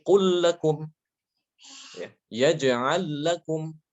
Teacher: huruf lamnya itu akan diidghamkan karena ketemu dengan huruf semisalnya